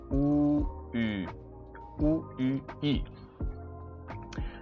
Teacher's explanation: The Ü is somewhat between an U and an I. So if you kind of say an U and now you go into an I, you will find the Ü.